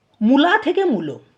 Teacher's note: এবারে কি হয়েছে দেখো, পরবর্তীকালে কি হয়েছে না, লয়ের সঙ্গে যে আ স্বরধ্বনিটা যুক্ত ছিল সেটা ওকার হয়ে গেছে · কীরকম না, প্রথমে উর, তারপরে আছে আ মূলাতে, তাহলে প্রথমের যে উ স্বরধ্বনির প্রভাবে আটা পরিবর্তিত হয়ে ওতে পরিণত হয়েছে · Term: প্রগত স্বরসঙ্গতি